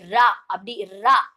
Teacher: நாக்கு கொஞ்சம் உள்ள மடக்கி அன்னத்துல டச் ஆகுற மாதிரி கொஞ்சம் நல்லா நாக்கு மேல நடு அன்னத்துல டச் ஆகுற மாதிரி சொல்றது ரா கொஞ்ச நல்லா அழுத்தம் கொடுத்து ரா அப்படி ரா அப்படின்னு சொல்றோம் இல்லையா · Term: வல்லின ரா